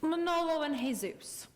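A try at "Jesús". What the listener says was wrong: Don't pronounce the J.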